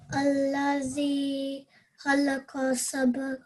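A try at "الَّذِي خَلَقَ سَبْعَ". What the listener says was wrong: Well done.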